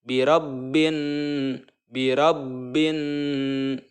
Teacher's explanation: Nun ya mendengung jadi dengan ini adalah menyeretnya suara ya ke hidung birabbinnas birabbinnas 2/3 harokat menahan tersebut itulah cara membaca ghunnah kemudian